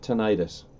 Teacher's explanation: Yeah, I just checked uh dictionary.com and they have an actual pronunciation and they're calling it tonitis >> with the accent on the second syllable